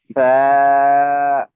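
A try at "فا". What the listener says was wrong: এত টানেন কেন? এক আলিফ, সা,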